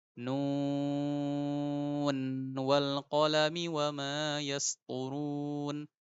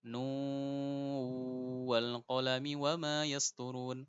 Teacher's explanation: jadi nunnya kelihatan jelas, izhar